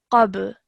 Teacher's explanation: So again, the rule of qalqala applied really nicely, because when we're pausing after the ba, the fatha becomes a sukoon. So when you're joining the qaf to the ba, you produce a jerk sound, qab, like that, which you did really nicely.